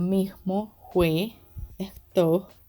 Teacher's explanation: Aspiración se da por lo general cuando la alveolar fricativa S o la biodental fricativa F cambian a un sonido aspirado o de J